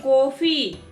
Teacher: अर्धचंद्राकार केवल अंग्रेजी शब्दों के उच्चारण में लगता है। अर्धचंद्राकार का उच्चारण करते समय होठ गोल हो जाते हैं